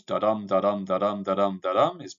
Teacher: grouped in pairs of unstressed followed by stressed syllables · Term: iambic pentameter